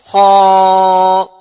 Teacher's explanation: اب خا کا جو مخرج ہے وہ ہمارا آخری حلق ہے، یعنی آخری حلق سے خا ادا ہوتا ہے، تو پڑھیے خا جیم دال با الف تا جیم ہا ہا۔